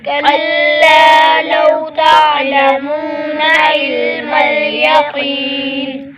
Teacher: کلا، لام پر الف مدہ، ایک الف کھینچے گے۔ لو، یہ واو لین بغیر کھینچے بغیر جھٹکا دیے نرمی سے معروف پڑھیں گے۔ · تا، عین کو گلے سے نکالے گے، منہ پر واو مدہ، ایک الف کھینچے گے۔